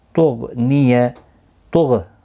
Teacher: لن تغنی نون ساکن کے بعد حروف اخفا کا تا آیا ہے، اخفا حقیقی ہوگا۔ تغ غین ساکن پر قلقلہ نہیں ہونا چاہیے